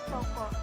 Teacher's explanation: bunyi O dengan ciri-ciri tengah, belakang, bulat